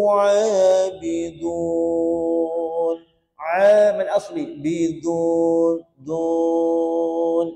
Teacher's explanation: huruf dal ujung lidah sentuh pada pangkal gigi atas. Ujung lidah betul, kuncupkan ujung lidah tu, kenakan pada pangkal gigi atas.